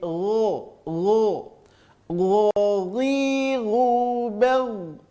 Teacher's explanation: terasa di ujung tenggorokan keluarnya tapi lebih lembut saja bunyinya daripada huruf ko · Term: huruf gho